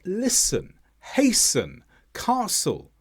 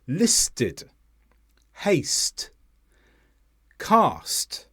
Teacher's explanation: the T should have been silent it should have just been the S sound